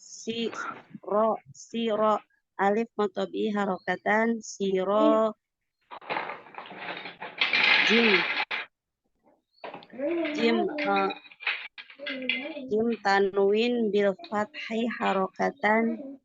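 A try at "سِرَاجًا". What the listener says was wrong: Bukan nggak pakai harokatan, nggak pakai harokatan. sirojan. Nanti baca jannya. Jim tanwin bil fathi, ulang lagi sirojan.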